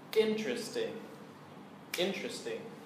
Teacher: interesting has three syllables and the stress is on the first syllable